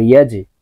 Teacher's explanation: জিমকে ধাক্কা দিয়ে উচ্চারণ করতে হবে, কারণ জিম কলকলার হরফ , ধাক্কা দিতে হবে নিচের দিকে ধাবিত করে। ইয়া জিম জবর